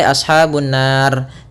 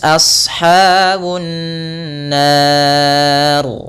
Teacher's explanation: Dan lafal ra sendiri ketika dia sukun atau dimatikan dan sebelumnya fathah, maka ra-nya tebal, tidak boleh ashabun nar.